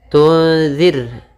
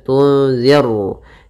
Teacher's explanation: pada lafal ra, di sini ra tipis, ra tarqiq, tunzir, ya, tidak dibaca tunziru, nanti jadi ra tebal, tapi tunzirhum.